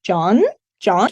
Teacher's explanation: the rising tone many people struggle with this however it's the same tone that you would use when you want to call someone